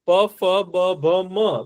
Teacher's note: ફ બ ભ મ બોલો તો પ ફ બ ભ મ તો બધામાં હોઠ અડે છે એકબીજાને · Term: ઓષ્ઠ્ય વ્યંજન